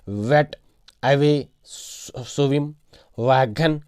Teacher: इसको आप प्रोनाउंस करते वक्त आपके होंठ थोड़ा गोल हो जाते हैं, वो आपका जो होंठ है वो थोड़ा गोल हो जाते हैं। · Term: व की साउंड